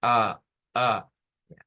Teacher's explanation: nosotros la A la hacemos abriendo, por eso es abierta, y la lengua abajo acá. O sea, casi tocando lo que son los dientes aquí, hacia adelante, ahí es donde se hace a, hacia adelante. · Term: vocal anterior abierta